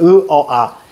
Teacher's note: 고모음, 중모음, 저모음. 즉 밑으로 내려갈수록 입 모양이 벌어지는 거예요.